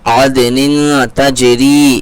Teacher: عدن، تنوین کے بعد حروف اخفا کے 15 حرفوں میں سے تا رہا ہے، یہاں پر اخفا کا قاعدہ لگے گا، تھوڑا سا کھینچ کر کے پڑھیں گے، نون کی آواز کو ناک میں چھپا کر کے پڑھیں گے